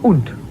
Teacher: when the word ends with a D, instead of the D sound, you say a T sound.